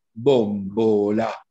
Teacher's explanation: la bombola che ha una o chiusa